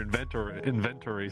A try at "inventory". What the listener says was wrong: Inventory. It sounds like you're trying to say event, but